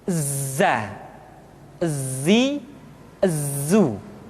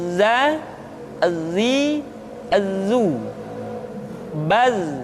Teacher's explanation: suara kita mengalir, akan tetapi nafas tidak boleh mengalir. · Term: huruf za